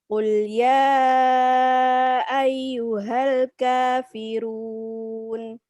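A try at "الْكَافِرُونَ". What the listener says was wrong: الكافر تفخيم الراء.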